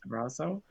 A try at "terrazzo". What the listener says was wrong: You say it like pizza. Oh, not sa. Za.